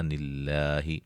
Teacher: لفظ اللہ کے لام کو باریک پڑھیں گے، اس سے پہلے زیر ہے